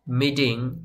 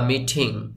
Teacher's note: আপনি এই টি টাকে ঠ এর মত করে উচ্চারণ করতে পারেন বা ড এর মত করেও উচ্চারণ করতে পারেন